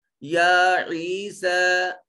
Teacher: آخر پر یا لکھنے میں آئی لیکن پڑھنے میں نہیں آئی، اس کو ایک الف کے برابر لمبا کریں گے اور آخر پر الف کی آواز نکالیں گے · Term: الف المقصورہ